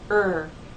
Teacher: when you make the ER sound her the tip of your tongue does not touch the bump or any part of the roof of your mouth